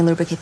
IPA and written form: ˈluː.brə.keɪt (Lubricate)